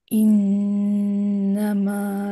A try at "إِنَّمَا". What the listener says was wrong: আরো নাকে আসবে, আরো নাকে, ইন্নামা। হুম, মানে আপনার উচ্চারণ আসে, আমার কাছে মনে হয় যে আপনি একটু মানে খুলেন না, মানে আপনার আওয়াজের ভিতরে আপনি ধরে রাখেন। এটা হতে পারে ছেলে আর মেয়ে একটু ডিফারেন্ট হয়, বাট আমার মনে হয় যে আপনি চাইলে আরেকটু লাউড হইতে পারেন।